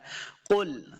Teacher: قاف کو بھی موٹا پڑھیں گے اور قاف کو نچلی والی لائن کے اندر لام جو ساکن ہے اس کے ساتھ ملا کے پڑھنا ہے۔